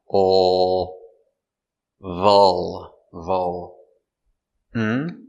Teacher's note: This is a dark L, so it goes in the back.